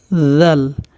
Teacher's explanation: জিহ্বার আগা দুই দাঁতের আগার সাথে সামনের উপরে দুই দাঁতের আগার সাথে লাগবে